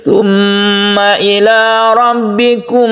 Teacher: Ini disebut Idgham Mimi , dan kita mengucapkannya dengan bunyi nasal karena membentuk bunyi Mim dengan Tashdid.